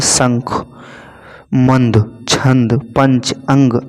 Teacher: वहीं [नाक से की जाने वाली आवाज़] अनुनासिक के विपरीत अनुस्वर जो है मुंह से कम और नाक से अधिक सांस निकलती है